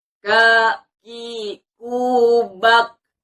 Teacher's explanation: Jadi ketika kita membunyikan kaf itu bukan kaf, bukan, tapi kaf ya. Kaf dia ada sedikit hamas, ada sedikit mengeluarkan nafas.